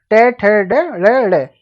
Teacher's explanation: जहां पे जीभ का आगे का भाग तालु के साथ जुड़ता है वहां पर मूर्धन्य व्यंजन बन जाता है